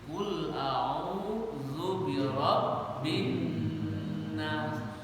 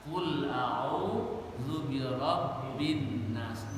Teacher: nun tasdid birabbinas itu digunahkan tahan dua harakat bunyi dengung dari hidung. Jangan dari mulut.